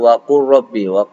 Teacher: Contohnya ro sama lam. Huruf lam condong pada ujung lidah, sedangkan ro condong pada lidah bagian atas dan condong sedikit pada makhrajnya lam. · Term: sifat al-inhiraf